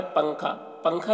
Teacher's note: نون کی آواز ناک میں چھپ رہی ہے، اور زبان کی حالت یہ ہے کہ زبان اوپر کی طرف اٹھی ہوئی ہے لیکن اوپر تالو میں سٹی نہیں ہے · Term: اخفا